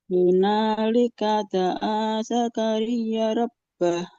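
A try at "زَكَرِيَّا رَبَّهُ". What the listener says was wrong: Zakaria. Oke, sebelum dilanjut Ibu, huruf ya fathah ketemu alif berarti panjang ya. Zakaria. Hunalika da'a Zakaria rabbah.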